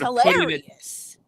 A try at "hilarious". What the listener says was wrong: Did you mean to say hilarious and emphasis on Larry?